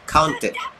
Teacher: T dia berakhir dengan huruf T. Jadi berakhir dengan huruf T, maka dia ada bunyi ID.